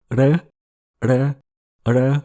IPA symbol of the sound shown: ɺ ɺ ɺ